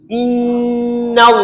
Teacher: Ha tu baca dengan nipis kalimah Allah. Innallaha inna tiap-tiap nun sabdu kena baca gunah. Wajib baca dengung. Ha iaitu wajibul ghunnah, wajib baca dengung. · Allah sini baca dengan tebal tafkhim lafzul jalalah kerana belum pada kalimah Allah baris fat fathah. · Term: tafhim lafzul jalalah